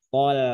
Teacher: ketemu to dengan lam tipis. Maka jangan lamnya ngikut tebal, tol bukan tol tapi tol.